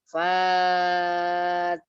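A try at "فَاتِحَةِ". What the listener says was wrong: Kepanjangan. Fatihati. Jangan kepanjangan.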